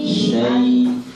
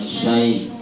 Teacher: Kemudian ketika sukun suaranya suara i, jangan suara e. Syai, ya. Bukan syai.